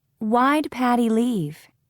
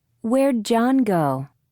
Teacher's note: In questions, do and did are reduced, pronounced very quickly, to become d.